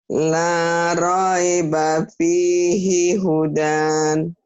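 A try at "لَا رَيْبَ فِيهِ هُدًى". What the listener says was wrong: Itu bisa, tapi hudannya jadi kalau kalau dibaca apa adanya jadi nggak panjang. La raiba fihi hudan. Naik kuda, hudan, hujan. Ini pendek. La raiba fihi hudan. Tapi kalau dihentikan la raiba fihi huda jadi panjang gitu ya.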